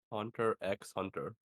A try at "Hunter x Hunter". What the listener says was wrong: Do not pronounce the X. It is a literary device used to separate two words.